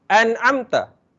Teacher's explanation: So kita tidak mensenyawakan nun mati ni kepada ain. Kita baca secara jelas. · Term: izhar